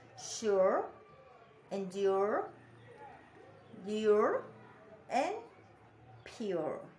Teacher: this diphthong starts in a slightly closer position than the vowel in put and push before gliding toward the central schwa position.